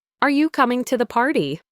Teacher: For example, are you coming to the party? My voice goes up on party. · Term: rising intonation